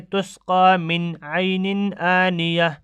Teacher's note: یعنی اس کو جلدی سے ظاہر کر کے پڑھیں گے نون کو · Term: اظہار